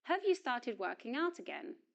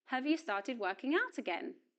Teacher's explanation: In the yes no question, the auxiliary verb have does not receive stress and the vowel sound of the word is pronounced. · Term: weak form